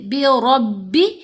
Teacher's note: را کو با سے ملائیں گے مضبوطی سے